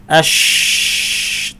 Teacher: আমরা যখন বলছি আশ, তখন এই ভোকাল কর্ডসটা সম্পূর্ণ খুলে আছে আর প্রচুর পরিমাণে বাতাস সেখান থেকে প্রবাহিত হচ্ছে, এই জন্যই এর আওয়াজটা অনুচ্চ। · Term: হামস